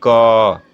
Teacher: जब आप क बोलेंगे तो क में अ की ध्वनि आएगी, अ का उच्चारण आएगा। इसका मतलब कि क में अ है, क में अ है।